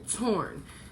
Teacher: it's not saying oh it's saying or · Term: R controlled syllable